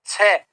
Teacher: छ बोलेंगे तो जीवा तालु को स्पर्श जरूर करेगी